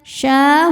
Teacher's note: huruf shin berharokat fathah panjang. Cara bacanya panjang 2 harokat. Fasyaribuna, huruf ra dibaca secara tarqiq karena harokatnya di bawah kasrah. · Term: mad tabi'i muqaddar